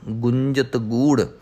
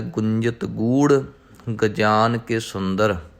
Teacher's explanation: ਰਾੜੇ ਨੂੰ ਥੋੜ੍ਹੀ ਜਿਹੀ ਹਾਹੇ ਦੀ ਟੋਨ ਦੇਣੀ ਹੈ